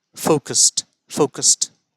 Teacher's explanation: चलिए, ईडी युक्त है आखिर में या अंत में, फोकस्ड, फोकस्ड। तो इसका उच्चारण भी डी से अंत होना चाहिए, लेकिन अंत हो रहा है टी से।